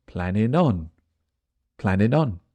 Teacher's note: G on planning disappears planning planning I was already planning so now the G is gone the N joins the next letter